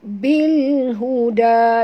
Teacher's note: Bunyikan lam yang mati dengan jelas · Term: alif lam qamariyah